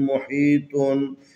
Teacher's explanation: یہاں طا حروف استعلا میں سے ہیں، اس کو موٹا پڑھنا ہے